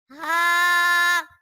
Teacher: हाँ हलक के नीचे वाले हिस्से से अदा होता है